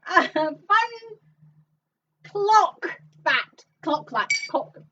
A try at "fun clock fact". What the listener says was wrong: No, you see, you do that, it ends up sounding like cock fat. Fun cock fat. Fun clock fact.